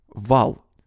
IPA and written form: vɑɫ (вал)